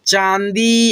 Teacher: पर एक बिंदु है यह चंद्रबिंदु की मात्रा होती है और इसका उच्चारण जो है ना दोस्तों नाक और मुंह के मिलने से होता है